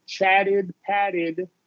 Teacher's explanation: T when we add Ed right it becomes a flap T